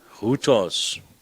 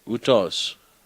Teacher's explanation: it is not aspirated, in other words, it is soft